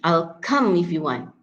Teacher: native speakers stress on the word come and want